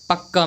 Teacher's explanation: जैसे दिल्ली में ला और ला के बीच कोई स्वर नहीं है, पक्का में का और का के बीच कोई स्वर नहीं है, तो ये हमारे हो गए द्वित्य वर्ण दोस्तों। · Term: द्वित्य व्यंजन